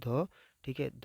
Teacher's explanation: ध जो है ये महाप्राण होता है ठीक है इसको दंत इसका उच्चारण दंत से होता है